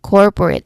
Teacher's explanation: you should say the first syllable, no, the core part with more emphasis and of course slightly longer because it is stressed, it is emphasized, it is the focus. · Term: stressed syllable